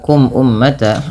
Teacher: Kemudian pada lafal kum ummata ada mim mati bertemu dengan hamzah. Maka hukum tajwidnya yaitu izhar syafawi yang di mana suara mimnya dibaca dengan jelas